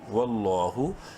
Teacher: لام کو بولڈ کریں گے اور ایک الف کے برابر لمبا کریں گے کھڑی زبر کی وجہ سے